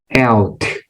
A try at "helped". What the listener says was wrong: No, see, that time, I don't see your mouth, but what I heard is that you didn't close your mouth. Watch what happens here, right? Because I'm going to say it and I won't close my mouth. And you listen, yeah?